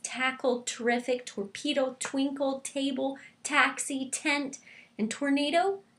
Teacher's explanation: my tongue is tapping on the top of my mouth right behind the front teeth